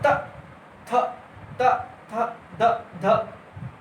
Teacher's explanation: जीभ का जो अगला वाला भाग है ये दांत में टच हो रहा है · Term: ता वर्ग